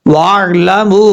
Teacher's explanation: वाव आइन ज़बर वार, लाम ज़बर ला, मीम वाव पेश मू, वार लामू। वाव के बाद जो अलिफ है उसको छोड़ देंगे, आइन के साथ डायरेक्ट कनेक्ट करेंगे। मीम के बाद वाव मद्दा है और इसके ऊपर मद्दे मुनफसिल है, 2.5 से 3 अलिफ के बराबर इसको लंबा करेंगे।